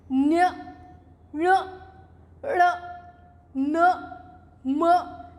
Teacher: ये 5वें जो वर्ण है, 5 वर्ण है, इनको नाक से बोला जाता है। न्य ण ण न म, नाक का यूज हो रहा है, इसलिए इनको 5 को हम नासिक्य वर्ण कहते हैं।